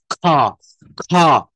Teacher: দেখেন বাতাসটা জোরে প্রবাহিত হয় মুখের থেকে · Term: এসপিরেটেড